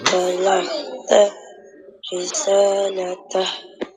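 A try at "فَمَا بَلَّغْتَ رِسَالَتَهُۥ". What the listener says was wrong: Lam ada sabdu. Kalau kena tekankan bacaan. Dia kena tekan ballagta.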